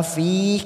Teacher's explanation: Sab'a langsung masuk pada fi, kasrah bertemu ya sukun 2 harokat kita panjangkan